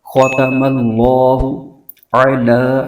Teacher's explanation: اللہ کے لام سے پہلے زبر آ رہا ہے تو اس کو پر کر کے پڑھیں گے، موٹی آواز کے ساتھ پڑھیں گے۔ ختم اللہ علی، لام پر کھڑا زبر ہے، اس کو ایک الف لمبا کھینچیں گے۔